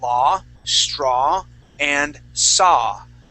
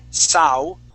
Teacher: Okay, so it's either going to be an O or ow. Okay, but when you have an AW sound, we only pronounce an ah